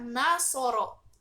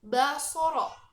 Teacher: contohnya ada kata nashoro yang berarti menolong akan berubah maknanya jika fonem nasal Nun yang ada di awal kata tersebut diubah menjadi fonem bilabial · fonem nasal nun yang ada di awal kata tersebut diubah menjadi fonem bilabial, yaitu ba, menjadi basoro yang artinya melihat.